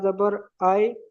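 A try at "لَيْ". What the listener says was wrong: হামজা নয়, ওটা লাম ইয়া জাবার লাই। ইয়া সাকিনের ডান দিকে। ইয়ালিনকে।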